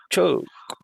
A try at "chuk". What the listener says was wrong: Ok, sí me está saliendo el sonido, pero le estás poniendo una glotal a la K. Ajá, ese sonido. La C suave, así suena la K. Chuk.